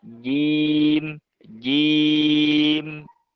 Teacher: Yang digunakan tuh lidah bagian tengah ya. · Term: huruf jim